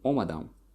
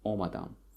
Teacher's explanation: the stress falls on first syllable